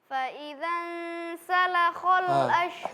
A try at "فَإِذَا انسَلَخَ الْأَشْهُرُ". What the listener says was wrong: Sinnya hilang. As, sin. Nanti mohon diperhatikan karena huruf sinnya hilang.